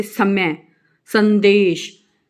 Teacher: जब आप स का उच्चारण करते हैं तो जीभ का आगे का भाग दंत को, यानी कि दांतों को स्पर्श करता है